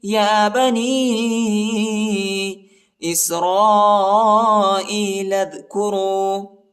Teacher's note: 2-3 second تک کھینچنا ہے۔ یا بنی، یا بنی اسرائیل اذکروا، حمزہ کو یا کے ساتھ ملائیں گے اور لام کو دال کے ساتھ ملائیں گے